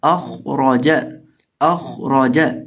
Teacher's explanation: را کو بھی پر کر کے پڑھیں گے، را کو بھی موٹا کر کے پڑھیں گے · خا کو ہمیشہ موٹا پڑھا جاتا ہے کیونکہ خا حروف مستعلیہ میں سے ہے